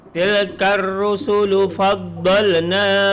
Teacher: tepi lidah berada di tepi gigi geraham sebab dia huruf dad